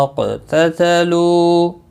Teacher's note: تتلو لو واو مدہ ہے. وقف کی صورت میں بھی 1 الف کے برابر کھینچ کر پڑھیں گے اور ملانے کی صورت میں بھی 1 الف کے برابر کھینچ کر پڑھیں گے.